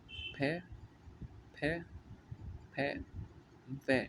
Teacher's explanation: हमारे जो होठ है, निचला होठ, वो दांतों से टच होता है फ और व बोलने में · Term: दंतोष्ठ